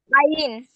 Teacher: হলকের মধ্যখান হইতে আইন